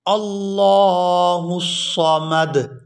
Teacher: لفظ اللہ کے لام سے پہلے زبر ہے تو لفظ اللہ کے لام کو پورا ادا کیا جائے گا، اور آگے صاد ہے، سین اور صاد ان دونوں میں فرق کر کے ادا کرتے ہیں، اور آخر سے وقف کی وجہ سے دال کو ساکن کر دیں گے۔